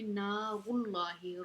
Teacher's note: نا الف مدہ ہے، اس کو ہم کھینچ کے پڑھیں گے، نار اللہ، را کے اوپر پیش ہے تو اس کو ہم موٹا پڑھیں گے، لفظ اللہ کا لام موٹا پڑھیں گے۔